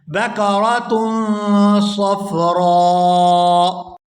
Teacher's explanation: یہاں بھی حمزہ کو ساکن کر دیں گے، را کو کھینچتے ہوئے حمزہ ساکن کے ساتھ ملائیں گے